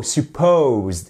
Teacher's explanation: Accentuation sur la seconde partie du mot.